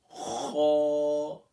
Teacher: حروف مستعلیہ میں سے پہلا لیٹر ہے اور اس کو فل ماؤتھ کرنا ہے